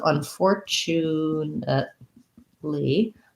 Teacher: unfortunately has the second syllable stress